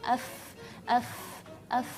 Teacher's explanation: kalau sifat rakhawah berarti tidak terlalu kencang atau pertengahan, tapi dia kendor. F agak suaranya agak panjang. F seperti itu.